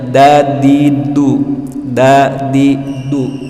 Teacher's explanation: Ini gigi seri tengah 2. Ujung lidah itu menyentuh pangkal gigi seri atas, tidak naik ke geraham, tidak naik ke langit-langit, tidak turun ke bawah gigi. Disitulah tempat tempat ujung lidah ketika kita mengucap huruf dal, sehingga bunyinya dadidu, dadidu.